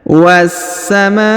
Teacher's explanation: kita langsung sambung huruf Ma kita panjangkan lima harakat karena di atasnya terdapat tanda garis bacaan panjang lima harakat yang